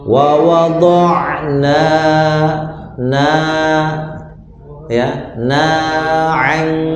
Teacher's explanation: Nunnya cukup 2 harokat ya. Jadi dua harokat, 2 hitungan ya, 1 alif.